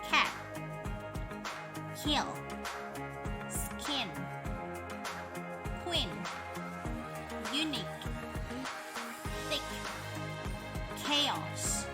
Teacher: voiceless stop made with the back of the tongue on a soft palate